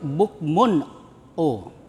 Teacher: Nah, ain itu huruf khalqi, huruf yang terdapat di kerongkongan. Nah, ini harus dibaca terang ya atau jelas kemudian tidak mendengung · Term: izhar halqi